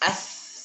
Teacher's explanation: Huruf tsa dia mengalir nafas. Lidahnya di ujung lidah sentuhkan ke ujung gigi seri atas